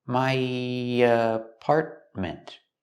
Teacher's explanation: when I link my to apartment we have the Y sound just a little bit